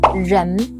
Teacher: It's more like the j in English pleasure or j in French journal. Soft, smooth with your tongue curled lightly.